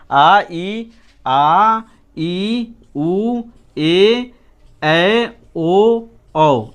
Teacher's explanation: दीर्घ स्वर के उच्चारण में ह्रस्व से 2 गुना अधिक समय लगता है